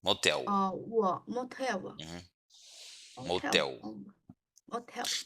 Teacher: the L is pronounced like a W in English